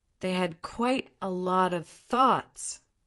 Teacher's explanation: The pause before thoughts substitutes a harsher word like objections or criticisms.